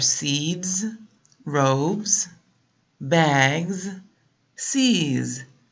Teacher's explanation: so these have a z sound on the end they have a z sound and these are voiced sounds and so the Final End sound of the word is or